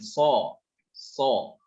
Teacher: Pangkal lidahnya terangkat ketika mengucapkan sod. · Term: isti'la